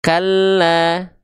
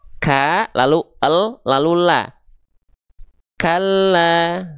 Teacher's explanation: ada sukunnya dulu baru keluar vokal a-nya. Kalla ada el, ada la. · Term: lam tasydid fathah